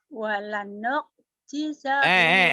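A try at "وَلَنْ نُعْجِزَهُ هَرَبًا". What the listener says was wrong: Bukan walanuk. Jangan kekak. Walan jizahu haraba.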